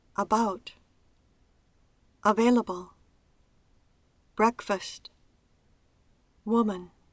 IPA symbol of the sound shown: ə